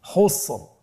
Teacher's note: তাহলে র সাকিন ওয়াকফের কারণে সাকিন, তার পূর্বে আরেকটি সাকিন রয়েছে এবং তার পূর্বে রয়েছে পেশ, তাহলে আমরা র সাকিনটাকে পোর করে পড়বো। আমার সাথে বলুন খুসর।